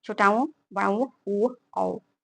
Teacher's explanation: अगर हम किसी किसी अगर हम किसी स्वर का उच्चारण जब हम करते हैं तो जो हमारा मुख, जो ओठ का आकृति है, आकार है, वह गोल हो जाए तो उसे हम वृत्ताकार या वर्तुल कहते हैं। जिनके उच्चारण के समय ओष्ठ गोल आकृति का निर्माण करते हैं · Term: वर्तुल या वृत्ताकार